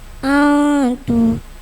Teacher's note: ikfa hakiki nun sukun bertemu tak samar bacanya.